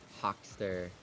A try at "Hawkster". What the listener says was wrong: It's Hawkster, not with a T. You're adding a T. There's never been a T.